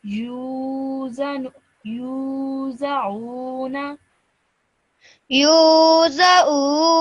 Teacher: make sure you stretch the U sound out for 2 seconds because of the vowel madda.